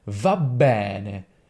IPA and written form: vabˈbɛne (va bene)